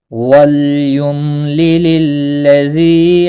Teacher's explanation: للذی ذی یا مدہ ہے ایک الف کے برابر کھینچ کر پڑھیں گے